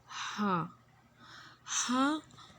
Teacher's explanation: وسط حلق یعنی حلق کے درمیان والے حصے سے ادا کیا جاتا ہے